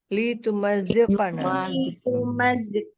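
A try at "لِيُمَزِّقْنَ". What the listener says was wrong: Pakai ya depan.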